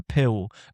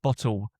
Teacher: an L is becoming like a W sound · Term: dark L